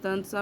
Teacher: یہاں نون غنہ کرنا اپنے تنسا میں، یعنی نون کی کلیئر ساؤنڈ نہیں آنی چاہیے